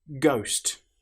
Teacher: The letter H, as you'll notice, doesn't sound at all.